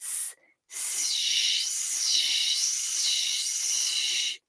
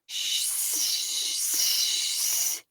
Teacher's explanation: for s the tip and blade of the tongue are further forwards and also that my tongue is curved to allow air through for shh the tip and blade of my tongue are further back and my tongue is flatter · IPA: /s/ and /ʃ/